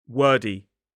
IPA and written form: ˈwɜːdi (wordy)